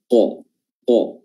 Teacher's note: Ya, huruf qaf makhrajnya adalah pangkal lidah. Ya, pangkal lidah paling dalam bertemu dengan langit-langit atas yang sejajar dengannya, yaitu langit-langit lunak yang paling dalam